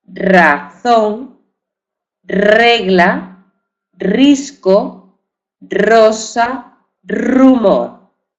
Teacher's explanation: palabra se escribe con una sola R con una sola r aunque tenga un sonido vibrante múltiple ya no es simple ya es múltiple